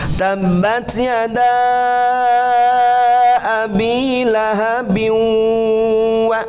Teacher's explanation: Lahabin ada tanwin kasrah bertemu huruf wawu, salah satu huruf idgham bi gunnah. Jadi tanwin kasrah menghadapi huruf wawu, ditahan 3 harakat.